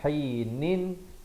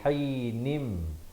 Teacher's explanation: Selepasnya datang huruf ba, maka cara bacaannya ialah ditukarkan bunyi nun kepada bunyi mim, daripada hainin jadi hainim. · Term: hukum iqlab